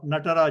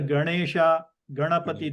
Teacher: your tip of the tongue has to roll backwards this is that Na and the other is a simple na